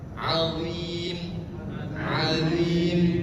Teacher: Huruf dha itu lidahnya sedikit digigit. Azim, azim, seperti huruf zal.